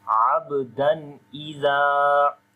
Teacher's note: Zal we long due to alif madda. Alif is coming after fatha sign. · We make izhar here because the rule is after the noon sakin or tanween, if the next letter is one of from 6 throttle letters, so we make izhar there, like we make the clear sound of noon